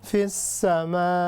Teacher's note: اس کے بعد ہے ام امنتم من غنہ ان اخفا فی السماء، یہ ہے مد متصل، یعنی اس کو 6 سیکنڈ تک ہم نے لمبا کرنا ہے۔ We need to stretch up to 6 seconds this مد متصل